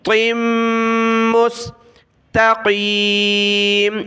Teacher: آگے میم کے ساتھ ملانا ہے، ناک میں آواز پیدا کرنی ہے، طا میم 2 زیر طم، میم سین پیش مس، طم، طا ہے، ٹھیک ہے، بڑی طا ہے، طم مستقیم۔